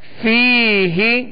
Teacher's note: فا یا زیر فی، ہا زیر ہی، فیہ فیہ. یا مدہ ہے، ایک الف کی مقدار اسے کھینچ کر پڑھیں گے